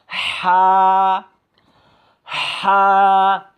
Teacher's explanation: মুখের কাছে নিলে আপনি দেখতে পাবেন যে একটু মানে একটু গরম বাতাস বের হতে হবে, মানে হলকের মধ্যখান থেকে, মানে একটু চাপ দিয়ে পড়তে হবে